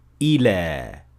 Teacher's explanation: But if it is used separately, it will end normally with an alif maqsura like so, ila, with a natural mad at the end of the word